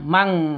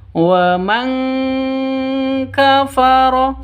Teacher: Nun matinya ditambah dengan ngg. Jadi bacanya mang seperti itu ya. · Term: ikhfa hakiki